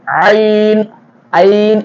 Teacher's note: ஐன் தொண்டையினுடைய நடுவுல இருந்து வரணும்